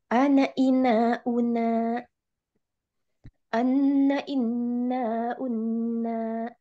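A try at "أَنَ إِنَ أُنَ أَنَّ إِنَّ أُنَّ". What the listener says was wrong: Ya.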